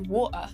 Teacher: we also drop the t's a lot in british english